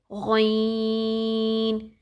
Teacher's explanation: یہ ہمارا جو حلق کا وہ حصہ جو کہ منہ کی طرف ہے وہاں سے ادا ہوگا جہاں سے خا ادا ہوتا ہے